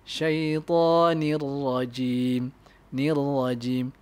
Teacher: Jangan buat macam tu. So lam dengan ra tak perlu ada gunnah. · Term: idgham bila gunnah